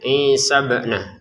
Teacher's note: Inya yang dua harakat. Kemudian bnya kita pantulkan ya.